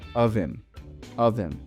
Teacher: the H sound in him is dropped as it gets linked to of